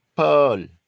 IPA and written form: pɜl (pearl)